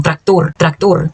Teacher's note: O Rzinho vibra, o Ozinho fechado